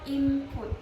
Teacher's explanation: Nah, huruf N-nya itu berubah menjadi huruf M.